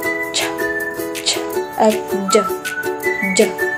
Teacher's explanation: sa bahagyang pagsara ng ibabaw ng dulong dila sa matigas na ngala-ngala kasunod ng pagsutsut